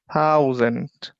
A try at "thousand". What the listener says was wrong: Thousand. Get the little bit of a in there so you can hear it. Thousand.